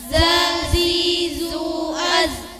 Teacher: Posisi pucuk lidah dan halaman luasnya dua gigi depan yang atas dengan menahan desisan.